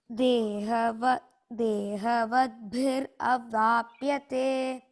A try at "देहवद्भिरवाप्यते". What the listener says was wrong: Don't say dehavadbhir. You should break it as dehavadbhihi avapyate. Okay, so don't break that word.